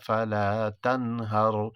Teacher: یہاں تنہر میں نون ساکن کے بعد حروف اظہار میں سے ہا آ رہا ہے، یہاں اظہار ہوگا